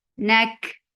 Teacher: Kaf will get sifa of hums because kaf is with sukoon now